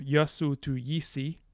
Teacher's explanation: so everything turns into e almost um cool so this are our stressed schwa and our u both become e